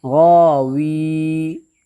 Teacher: پہلے واو کے نیچے زیر ہے، اس لیے یا مدہ ہوگی، یا مدہ کو ایک الف کے برابر کھینچ کر کے ادا کریں گے